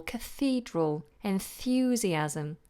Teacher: words that come from Latin or Greek we tend to change it to a voiceless th so for example Cathedral enthusiasm and it's a voiced th if